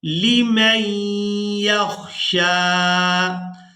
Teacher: मीम को या मुशद्दद के साथ मिलाएंगे तो गुन्ना के साथ अदा करेंगे। गुन्ना की आवाज़ भी नाक से अदा होती है।